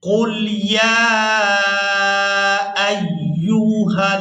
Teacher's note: یا کو ہم نے 4 سے 5 الف مقدار یعنی 4 سے 5 سیکنڈ اس کو کھینچ کر ادا کریں گے